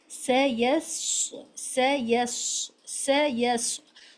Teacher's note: فرق یہ ہے کہ ایک کو باریک اور ایک کو موٹا پڑھنا ہے اور دونوں کو سیٹی کی آواز کے ساتھ پڑھنا ہے